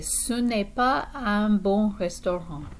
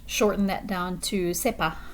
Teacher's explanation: And often when people speak very quickly in French, instead of saying ce n'est pas, they might just shorten that down to c'est pas. The ne kind of gets dropped in quick speech.